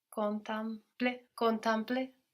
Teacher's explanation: So the same thing that happened to the E in trente is happening to it here in to contemplate. It ends up sounding more like an A when it's brought into the nose because of that M that gets swallowed up.